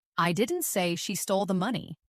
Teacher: Finally, let's stress money. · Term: sentence stress